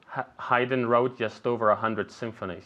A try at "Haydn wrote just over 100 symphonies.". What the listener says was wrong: Perfect, very good.